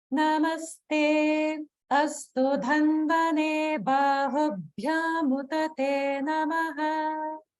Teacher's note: notice the small gap after the Namaste and before Astu, and that's due to the rule involving a word that ends in a dirgha vowel, and then the next word begins in any vowel.